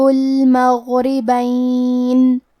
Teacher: کلمت المغربین میں غین کی ادائیگی حلق کے اوپر والی حصے سے ہے. غین حروف تفخیم میں سے ہے تو ہمیں یہ حرف کو موٹی آواز میں پڑھنا ہے. را کو پتلی آواز میں پڑھیں گے.